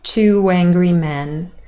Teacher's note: From vowel u to vowel eh, we add a w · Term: intrusion